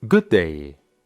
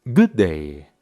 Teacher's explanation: en vez de separar los sonidos y decir good day, simplemente los unimos y los hacemos un poco más largos